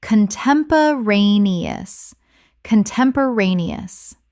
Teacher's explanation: 6 syllables with the stress on the fourth.